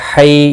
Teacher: یا لین ہے، تھوڑا نرمی کے ساتھ کھینچ کر ادا کریں گے